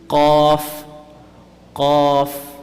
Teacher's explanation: Qaf is when the back portion of the tongue rises and meets the palate.